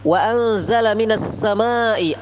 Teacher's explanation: nun mati bertemu za, itu adalah ikhfa, dibaca samar-samar